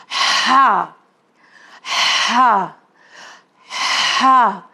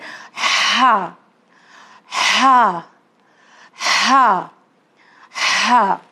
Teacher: تو یہ حرف ہلکی جو ہا ہے اسے مڈل حلق سے نکالیں گے